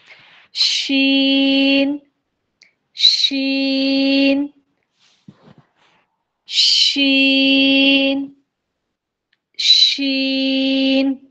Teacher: یعنی آپ ایک گیٹ لگا لیں جس میں آواز پاس نہیں ہوگی تو یہ جو گیپ رہ رہی ہے نا تالو اور زبان کے درمیان جو گیپ ہے اس سے ایئر فلو پاس ہوگا